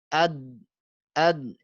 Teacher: Kerasa suaranya tadi ya dari sisi lidah di dalam. Kalau dal di ujung lidahnya.